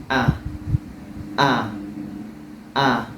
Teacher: tempat keluar huruf hamzah, yaitunya di tenggorokan, tepatnya di pangkal tenggorokan. Di sini aqsal halqi, di pangkal tenggorokan.